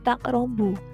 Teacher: hukum bacaannya qalqalah sugro yang alasannya huruf qaf berharokat sukun ada di tengah kalimat atau di tengah kata.